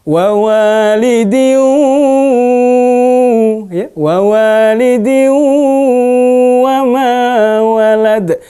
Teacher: Tanwinnya lebur ke huruf waw, ya. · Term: idgham bi gunnah